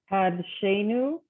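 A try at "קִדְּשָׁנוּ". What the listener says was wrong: So there's 1 dot under that first letter, right? The 1 dot is the E, right? It's a chirik.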